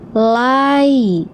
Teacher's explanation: Bunyi ini ya sukun menjadi i karena huruf sebelumnya memiliki fathah harakat.